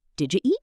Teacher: In fast speech, you often becomes just ya. Did you eat becomes did you eat?